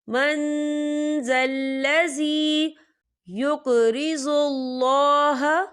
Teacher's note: जाल जो है इक्फा का वर्ड है, तो हम यहाँ इक्फा करेंगे, नून साकिन की आवाज़ को नाक में छुपाएंगे।